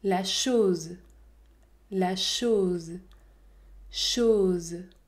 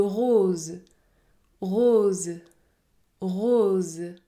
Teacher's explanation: la lettre O peut également se prononcer o fermé lorsqu'elle est suivie par le le son Z